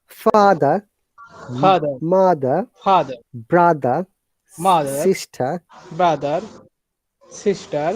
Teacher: once again no R sound of these words in British pronunciation